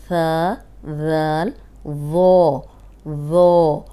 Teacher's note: اوپر سامنے کے جو 2 دانت ہیں ان کے کنارے پہ زبان رکھ کے بولیں گے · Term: نرم